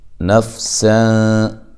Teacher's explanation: فا کو ہلانا نہیں ہے، سین کو باریک سیٹی سے ادا کرنا ہے، یہاں نون تنوین کا اخفا ہے، اخفا مع الغنہ ہے، باریک اخفا کرنا ہے۔